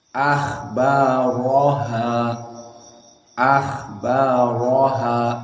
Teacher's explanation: Maka ro dibaca oleh qiraah wars keadaan tafkhim.